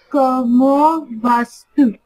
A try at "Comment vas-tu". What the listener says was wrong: Not vastu, vatu. A silent. Como vatu.